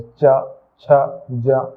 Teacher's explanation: जब हम उच्चारण करते हैं तो तालु का उपयोग करते हैं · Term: तालव्य